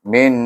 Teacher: kenapa ada dengung bunyi? Iaitu sebab dia wajib gunnah, nun tu bertasydid